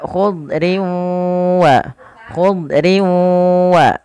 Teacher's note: ditahan dengan guna sepanjang dua harakat